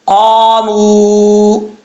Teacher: والا قاف، اس کا مخرج آپ کو میں بتا چکا ہوں، میم کے بعد واو ہے، واو مدہ، 1 الف کی مقدار لمبا کریں گے